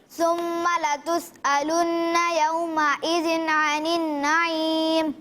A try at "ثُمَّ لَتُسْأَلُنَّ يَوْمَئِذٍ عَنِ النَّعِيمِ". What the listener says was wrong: ماشاءاللہ بہت اچھے انداز سے آپ نے ادائیگی کی، لیکن جب ہم سا کو پڑھیں گے تو اس میں سیٹی کی آواز نہیں آئے گی، یعنی ثم پڑھیں گے.